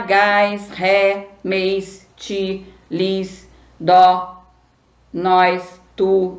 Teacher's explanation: O ti e o tu parece átona, mas não são, porque elas têm som forte.